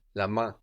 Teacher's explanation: this is spelled M-A-I-N. We don't hear that N, la main